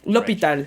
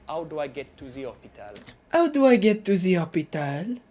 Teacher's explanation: if you want to do a French accent, drop your H's.